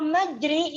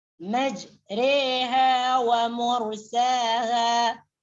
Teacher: ro di sini dibaca di antara alif dengan iya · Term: imalah